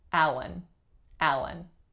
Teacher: First syllable, winner, and it's a tense a sound. Second syllable, schwa n, Allen, Allen.